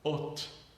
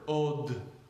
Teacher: Taf and dalet are the same sound, voice and voiceless being the only difference.